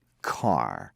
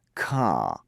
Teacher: in british english the r sound is very often dropped it disappears